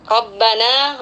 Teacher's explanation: roh berharokat fathah di sini kita baca secara tafkhim atau tebal ya